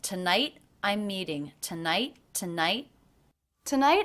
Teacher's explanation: I we would make that a flap T to connect but I made this a stop T so there was a little break in the line